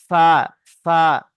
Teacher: দুটো দাঁত নিচের ঠোঁটে ভিজে অংশ লাগছে